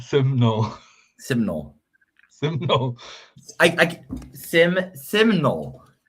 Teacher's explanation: you don't add a schwa